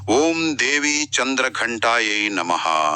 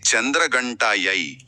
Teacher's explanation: ఈ మంత్రంలో ఉన్న ఘ అంటే ఒత్తు ఉన్న మహాప్రాణక్షరం